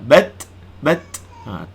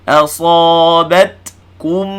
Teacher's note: Ta tu hamas hujung dia.